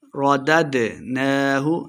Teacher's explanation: دال ساکن ہے، حروف قلقلہ سے ہے تو خوب واضح کریں گے